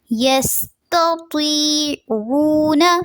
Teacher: یستطیع یس کے لیے سین میں سیٹی کی ساؤنڈ رہنی چاہیے